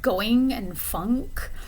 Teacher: Okay, the third nasal sound would be like going and funk. And so you're blocking off the oral passage by pressing the back of your tongue against the soft palate